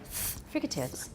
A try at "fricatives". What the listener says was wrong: Yeah, you go a little fast and it sounds a little too voiced or something. Fricatives.